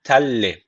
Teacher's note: tenvinden sonra lam gelmiş. O zaman burada idgam bilagun ne var? L harfini şeddeli okuyoruz. Burayı da t diye okuyoruz.